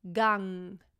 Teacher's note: And G is actually, the G is actually not a voiced sound. The NG at the end, however, is a voiced nasal sound.